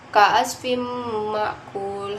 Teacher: idgham bi ghunna karena tanwin bertemu dengan mim, dibaca masuk dengan dengungan dan ditahan sepanjang 3 harokat